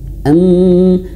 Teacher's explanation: harus ditahan am dan durasinya itu lebih lama daripada mad thabi'i. Meskipun dua harakat. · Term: mim bertasydid